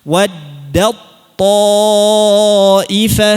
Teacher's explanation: Nah, di sini banyak yang keliru pengucapannya, sifat tipis ta nya masih terbaca, jangan. Hilangkan sifat tipisnya, langsung masuk ke huruf tha tebal.